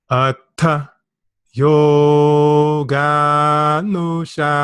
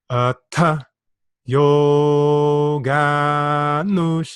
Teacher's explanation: Can you hear my voice fluctuating from low to middle to high to middle to low to middle? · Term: swaras